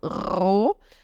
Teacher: eu tenho um R no início que eu vou ter que vibrar então ro e o h no final ele tá só alongando · Então, ao invés de falar O, eu falo O. Ou seja, a vogal é longa e é O, com a boquinha mais fechada.